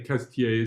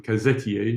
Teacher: saying Cazetiers as if it's almost just 2 syllables rather than 3